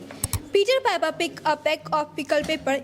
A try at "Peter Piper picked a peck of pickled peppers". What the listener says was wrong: But she mispronounced few words. Just like she missed saying papers. S is there. See, that is Peter Piper picked a peck of pickled papers.